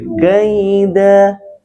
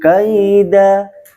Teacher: karena ada fathatain di waqaf, maka bacanya tidak boleh kurang dan lebih dari satu ayunan